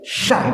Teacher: At-tafasyi itu hawanya menyebar ya.